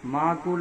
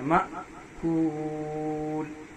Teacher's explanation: الف پہ جزم ہو تو جھٹکا پڑتا ہے، معقول نہیں پڑھیں گے، مأکول۔